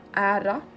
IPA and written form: æːɾa (ÄRA)